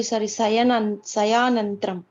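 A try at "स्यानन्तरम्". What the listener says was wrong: There is no Sayanantaram also. Syanantaram, not Sayanantaram. There is a difference between the two.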